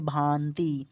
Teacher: और अनुनासिक क्या होता है अगर आप लोगों को ये बताऊँ ना, तो अनुनासिक शब्द के उच्चारण में क्या होता है, जो हवा है ना जब हम लोग उच्चारण करते हैं बोलने में, तो हवा जो है ना वो नाक और मुंह दोनों से निकलता है।